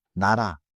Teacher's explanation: the middle 리을 taps lightly